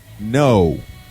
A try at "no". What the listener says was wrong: You go up at the end. You go no.